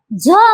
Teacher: आहेत बरोबर त्यानंतर ते महाप्राण आहे की अल्पप्राण आहे महाप्राण आहे झ म्हणताना हवा बाहेर पडते ना मग महाप्राण आहे